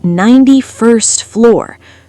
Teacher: In fast speech, the t in first almost disappears.